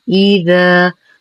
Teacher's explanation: ننتبه لحرف الذال اللثوي، فلا نقول إذا، والصواب إذا، طرف اللسان مع أطراف الثنايا.